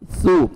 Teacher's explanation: सामने वाला दो दांत हैं, वो जबान को नीचे टच करेंगे तो नरमी से सा अदा होगा। वाव मद्दा है, 1 सेकंड हमने सा को खींचना भी है।